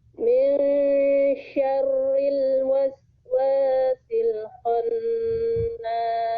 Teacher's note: Lagi syarril, shinnya besar, kho-nya ditebalkan.